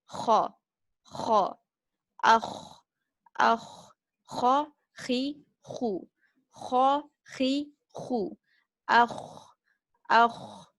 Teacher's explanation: We have this Kha from the upper throat, where you need to hear this sharp grinding sound. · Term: Al-Kha